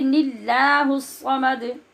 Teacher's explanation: अब लफ्ज़ अल्लाह के लाम से पहले नून के नीचे ज़ेर आ गई, तो इस ज़ेर की वजह से ऐसी सूरत में जिसको हम अल्लाहु पढ़ रहे थे उसको बारीक कर देंगे, क्योंकि पहले ज़ेर आ गई है।